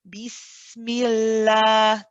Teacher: of allah and before it the last letter has a kasra then the lamb in the name of allah will be read light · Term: lamb is light